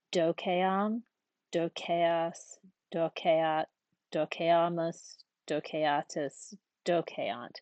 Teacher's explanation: So again, we eat caviar, so E long A. So here's our E long A, except it gets shortened before final M, T, and NT.